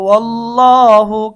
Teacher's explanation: এখানে আল্লাহ শব্দের ডানে জবর হওয়ার কারণে আমরা আল্লাহ শব্দের লামকে মোটা করব।